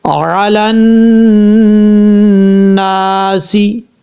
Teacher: نون کے اوپر شد غنہ کریں گے ایک الف کی مقدار